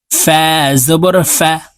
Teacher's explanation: ফা হরফ উপরের দাঁত নিচের ঠোঁটের পেটের সঙ্গে লাগিয়ে তাড়াতাড়ি করে উচ্চারণ করতে হবে